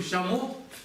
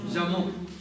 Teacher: там, где мы произносим ща в низком тоне, на востоке Тибета будет жа.